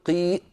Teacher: إذا قلت قي الآن أنا تعمدت إقفال الوترين